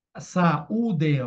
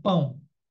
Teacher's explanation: o iato são dois sons separados né sa u ditongo são dois sons juntos como pão